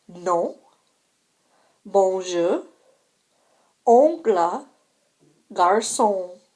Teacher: The letters O-N represent a nasal vowel. Be sure not to pronounce an N after the nasal vowel.